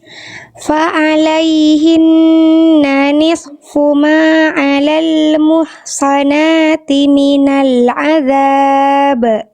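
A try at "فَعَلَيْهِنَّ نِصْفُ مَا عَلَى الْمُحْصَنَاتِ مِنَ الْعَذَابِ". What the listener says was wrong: Oke, shotnya udah tebel, bagus, tapi jangan putus desisannya. Jangan nisfu, jangan putus. Fa'alaihinna nisfu. Jadi esnya terus ngalir. Nisfu ma gitu ya.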